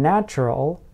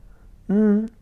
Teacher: involves the tip of the tongue touching the tooth ridge the area may be a centimeter or two behind your top teeth